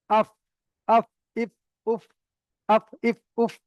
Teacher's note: নিচের ঠোটের ভিজ অংশ আর সামনের উপরের দুই দাতের আগা সাথে লাগবে